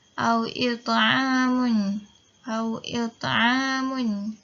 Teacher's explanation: Macam mana saya baca tadi, dia adalah sambung. Kita ada bunyi qalqalah tu, cumanya dia perlahan, tak sekuat qalqalah kubra. Sebab dia adalah qalqalah sughra, saghir, kecil.